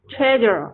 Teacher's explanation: 它是从高音读往下读